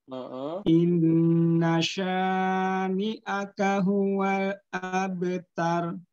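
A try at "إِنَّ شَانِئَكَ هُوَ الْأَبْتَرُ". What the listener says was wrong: Kepanjangan sya'nya. Hati-hati sya'nya kepanjangan. Haknya jadi ha. Naik aja. Inna syani'akahu gitu ya.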